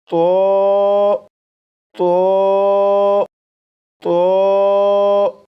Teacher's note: اس لیے اس حرف کو پڑھنے کے لیے دو باتوں کا خیال رکھیے گا۔ نمبر ایک، زبان کی نوک اوپر سامنے کے دو دانتوں کی جڑ سے لگا کر پڑھے گا۔ نمبر دو، آواز کو موٹا کر کے پڑھے گا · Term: پر یعنی موٹا